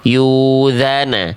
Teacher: salah karena bunyi hamzahnya dipanjangkan